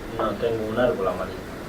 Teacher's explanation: So you hear a high accent on árbol. And in the literature, this has been described as a contour that leads contrastive focus, less contrastive focus on the word with a high prominent accent.